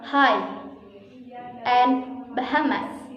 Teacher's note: Say these words and notice how you are not actually constricting or blocking airflow for this H sound. You are just exhaling a little bit harder than you would for a normal vowel sound in transition to the following vowel sound.